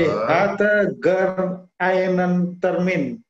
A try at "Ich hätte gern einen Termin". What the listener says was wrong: Ya, lebih tepatnya ich hätte. Jadi bukan hatte tapi pakai e gitu ya. Ich hätte gern einen Termin.